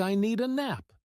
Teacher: The words need and a connect so smoothly that the d sound blends in. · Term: linking sounds, Linking sounds